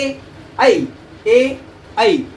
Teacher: कंठाचा आणि टाळूचा ह्या दोन्हीचाही या ठिकाणी संपर्क येतो. त्यामुळे ए आणि ऐ हे जे शब्द आहेत त्याला काय म्हणतो आपण, कंठ आणि तालू. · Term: कंठ तालव्य